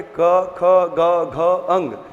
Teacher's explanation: तो कहां से उच्चारण होता है, कंठ से। तो का वर्ग के सभी वर्ण कहां से उच्चारित होते हैं, कंठ से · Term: कंठ व्यंजन